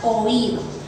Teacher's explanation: En este caso tenemos la O y la I, una vocal abierta y una cerrada. La cerrada está acentuada. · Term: hiato